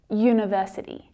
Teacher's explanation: So the U in university is pronounced U, university, as if it's written with the consonant letter Y, that sound, Y.